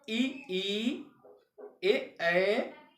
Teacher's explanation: ई ए तालु वर्ण होता है।